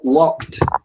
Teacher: Entonces, yo simplemente le pongo la ed y digo walked. Pronuncio al final explosivo la D